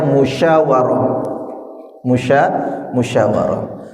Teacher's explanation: Syin itu mengeluarkan hawa bahkan hawanya menyebar. ya menye menyebar dan dia ada istilah khusus namanya tafasyi.